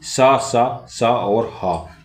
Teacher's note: संघर्षी व्यंजन है। संघर्षी व्यंजन वे होते हैं जिनके उच्चारण में हवा तेज गति से मुंह से निकलती है।